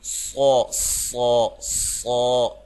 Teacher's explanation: موٹی سیٹی کے ساتھ لمبا کرتے ہوئے